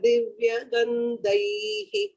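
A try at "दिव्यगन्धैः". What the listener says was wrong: Uttamam Bhagini, Divya Gandhaihi, the Mahaprana, Gandhaihi there. Other Mahapranas were okay.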